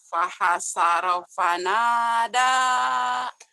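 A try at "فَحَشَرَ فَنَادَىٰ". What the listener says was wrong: fahasyara shin. Fahasyara fanada.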